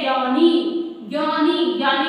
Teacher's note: ज्ञानी में हम किस पे जोर दे रहे हैं, गै पे जोर दे रहे हैं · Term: स्वराघात